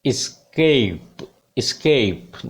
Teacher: Diphthong है, glide कर रही है साउंड, ए से ई की तरफ जा रही है।